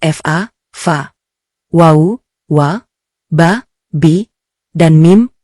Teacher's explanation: kedua bibir tempat keluarnya huruf fa, fa, wau, waa, ba, bi, dan mim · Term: asisyafatain